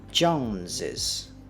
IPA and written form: ʤoʊnzɪz (Jones's)